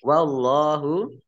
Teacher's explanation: Allahnya dibaca tebal karena harokat di depannya fathah. Lam fathah berdiri mat tabi'i panjang 2 harokat.